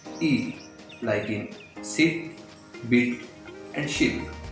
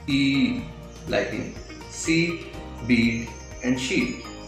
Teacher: The first one is short and quick. And the second one is longer and clear.